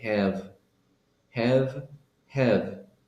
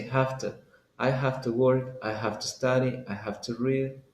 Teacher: say have to but if you say quickly have to so that V when you say it quickly becomes an F like an f and two becomes like T